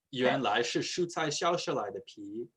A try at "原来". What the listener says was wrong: 原来 not 原来 you have fourth tone.